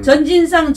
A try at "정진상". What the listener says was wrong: 정진상. 정의 정. 전이 아니라.